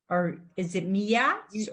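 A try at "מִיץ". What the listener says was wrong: You don't hear anything under the yud. No, you don't hear it. There's no vowel. So it's meats.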